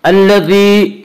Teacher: یا مدہ کو 1 الف کے برابر کھینچ کر پڑھیں گے